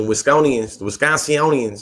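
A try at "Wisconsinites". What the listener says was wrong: Wisconsin. You was trying to add 6 more syllables.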